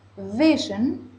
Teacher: la palabra en español decimos visión con acento en la o pero en inglés la sílaba tónica está al comienzo en la sílaba V